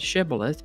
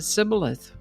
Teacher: The Gileadites pronounced the word with the SH sound, shibboleth, but the Ephraimites pronounced it sibboleth without the SH sound